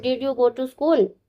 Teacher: The yes no question use a rising tone at the end.